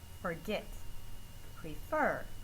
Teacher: Forget and prefer, the last syllable, second syllable, is the stressed syllable in the word